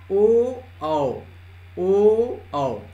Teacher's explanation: ओ औ, अब इसको बोलने में आप देखिए आपका हवा कंठ के सहारे आता है और होंठ के सहारे बाहर निकलता है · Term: कंठोष्ठ